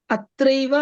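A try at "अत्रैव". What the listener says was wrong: ఏవా వస్తుందా? ఐవా. అత్రైవ. ఏవా చూడండి, ఇక్కడ అత్రాలో ఆ ఉంది. ఇప్పుడు సంధి జరిగి ఏమైతుంది? అది ఆ ఏ రెండు కలిపి ఏమి కావాలి? వృద్ధి కావాలి. అప్పుడు ఏమైతుంది? అత్రైవ. అత్రైవ.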